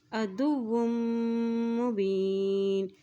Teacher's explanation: इसी तरह देखिए वाव की दो पेश को मीम के साथ मिलाते हुए पढ़ेंगे, मीम के ऊपर भी शद है, और जब मीम के ऊपर शद आ जाती है तो वहाँ पर गुन्ना भी अदा किया जाता है